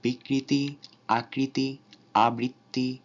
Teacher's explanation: যদি শব্দের মাঝখানে রিকার থাকে তাহলে সেই র এর উচ্চারণে কোনো দ্বিত্ব হয় না, সেখানে স্বাভাবিকভাবেই রিকার উচ্চারিত হয়, যেমন বিকৃতি, আকৃতি, আবৃত্তি ইত্যাদি।